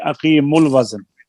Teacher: حمزہ گر گیا تو واو ساکن, واو مدہ تھی, حذف ہو گئی